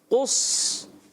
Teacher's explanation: موٹا کریں. قاف کو بھی آپ نے موٹا رکھنا ہے اور صاد کو بھی. صاد کو قاف سے بھی زیادہ موٹا رکھنا ہے.